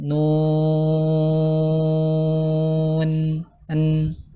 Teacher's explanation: Dan nun ini punya sifat tawasud ya, dialirkan sedikit. Nun, an ya, sifat tawasudnya dituntaskan.